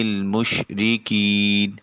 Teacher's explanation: مشرقین میں شین حرف شجریہ ہے، آواز منہ میں پھیل جانا چاہیے۔ کین میں یا ساکن ما قبل مقصور یا مدہ ہے، ایک الف کے قائم مقام اس کو لمبا کر کے ادا کریں · عین کو وسط حلق سے نکالیے۔ مشرقین میں شین حرف شجریہ ہے، آواز منہ میں پھیل جانا چاہیے۔